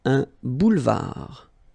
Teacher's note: Final D not pronounced.